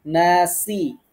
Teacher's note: এরপরে নাতে একালিফ টানবো, নাসি, সিন বারিক করে উচ্চারণ করব যেন সোয়াদের মতো না হয়ে যায়।